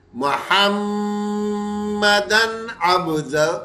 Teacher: یہ میم مشدد کا غنہ اپنی جگہ ہوگا، وہ ہر حالت میں ہوتا ہے، اس لیے اسے تو کریں گے، لیکن جیسے ہی ہم تنوین پہ آئیں گے، اس کے آگے حروف حلقی ہے تو یہاں غنہ نہیں کریں گے۔